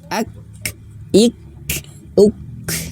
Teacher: jadi untuk huruf kaf itu tertahan baru mengalir nafas.